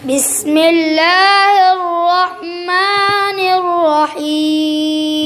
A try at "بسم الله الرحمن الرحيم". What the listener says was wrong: भाई आप बिस्मिल्लाह में गलती करते हो, रह हा ठंडी नहीं पड़ती हो। बिस्मिल्लाहिर्रहमानिर्रहीम